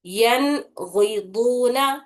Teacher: same ویسے ہی یہ کلمہ ہے نون ساکن آ رہا، اس میں اس کے بعد والا حرف غین ہے، غین حروف حلقی میں کا ایک حرف ہے، تو اسی لیے ابھی نون کی آواز کو صاف اور واضح طریقے سے پڑھنا ہے بنا غننے کے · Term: اظہار